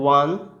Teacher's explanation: ওয়ানের যে উচ্চারণটা সেটা হচ্ছে ও আর আ, এই দুটো উচ্চারণ পাঞ্চ হয়ে আসে